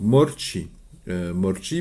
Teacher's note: il n'y a aucune difficulté à part des R roulés comme la R espagnole